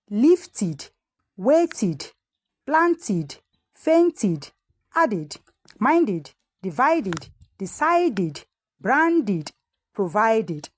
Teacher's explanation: It is pronounced as id after the consonants t and d.